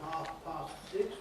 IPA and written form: ˈhɑːf pɑːst ˈsɪks (half past six)